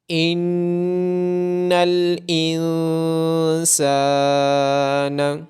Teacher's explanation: ان الانسان، نون مشدد ہونے کی وجہ سے نون پہ غنہ ہوگا، اور نون ساکن کے بعد حروف اخفا میں سے سین ہونے کی وجہ سے نون پہ اخفا ہوگا۔ سین کے بعد الف مدہ ہونے کی وجہ سے سین کو لمبا کیا جائے گا